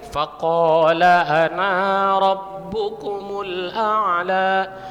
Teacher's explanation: Makanya nggak boleh setiap kalimat ana itu tidak boleh dipanjangkan. Iya, dipendek.